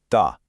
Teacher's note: The light letter ta is pronounced almost with a smile. You keep the sound thin